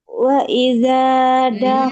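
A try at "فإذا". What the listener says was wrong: Iya, faiza. Tadi kedengarannya kayak waiza. Coba lagi,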